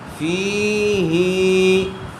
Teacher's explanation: فا کے نیچے زیر ہے، زیر کے بعد یا ساکن آئی ہوئی ہے اس لیے یا مدہ ہوگا، اور کھڑی زیر برابر ہوتی ہے یا مدہ کے، اس لیے فا اور ہا دونوں کو برابر برابر کھینچ کر پڑھیں گے